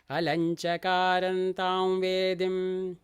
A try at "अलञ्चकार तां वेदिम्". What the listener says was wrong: Chakaran is not there. Chakara.